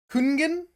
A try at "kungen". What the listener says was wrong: you don't pronounce the G. No. Yeah. Yeah. Kungen. You're adding an extra N somewhere.